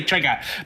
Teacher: Bostonians say trigger because every R has to be removed.